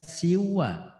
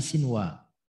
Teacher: Sinwanun itu nun sukun bertemu wawu, tidak dibaca siwa tapi sinwa. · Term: idhar mutlak